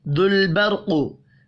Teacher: दुल बर्क़, लाम और रा साकिन है, कलकला नहीं करना। रा साकिन से पिछले हर्फ के ऊपर ज़बर है, रा को ऊपर पढ़ेंगे। قوف حروف مستعلیہ ہے، اس کو بھی پر پڑھنا ہے.